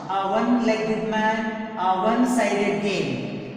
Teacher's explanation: Letter O is a vowel, but it is pronounced as wa. So wa is consonant sound.